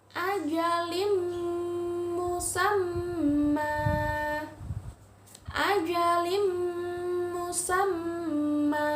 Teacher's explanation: berdengung ya tanwin bertemu dengan huruf mim ditasydidkan dimasukkan